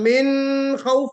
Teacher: نون ساکن کے بعد حرف حلقی، کوشش کیجئے کہ پورا جواب دیجئے. یہ کہیے کہ نون ساکن کے بعد حرف حلقی آ رہا ہے، فا، اس لیے اظہار ہوگا، غنہ نہیں ہوگا